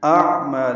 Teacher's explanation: حمزہ اقصی حلق سے، عین وسط حلق سے ادا کریں گے